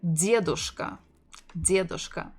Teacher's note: Stressing the first syllable. Дедушка. Дедушка.